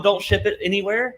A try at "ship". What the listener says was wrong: You have to pronounce the P there.